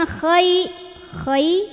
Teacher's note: Khainya pangkal lidah naikin. Ada ngorok-ngoroknya dikit ya, tapi jangan berlebihan.